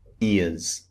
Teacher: the Z sound is not so strong like it is at the beginning.